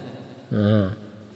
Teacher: Dha yang pertama bunyinya keluar dari tepi lidah. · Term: huruf dha